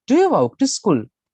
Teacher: මේ ශබ්ද මෙතනදී rising intonation අගට යද්දි ශබ්දේ වැඩි වෙන්න ඕන. ඔබේ හඩ වැඩි වෙන්න ඕන.